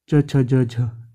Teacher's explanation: तालव्य से च वर्ग निकलता है